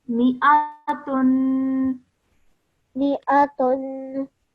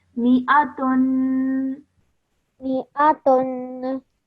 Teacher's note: because of the tanween, the dhammatain on top of the ta at the end, we produce a nasal sound which we hold in our nose for 2 seconds